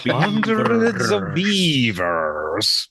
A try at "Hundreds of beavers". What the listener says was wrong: You gotta roll the R's. Beavers.